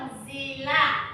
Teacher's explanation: maka bacaannya samar-samar disertai dengung, sehingga bunyi nun mati atau sukunnya tidak jelas dan diikuti dengung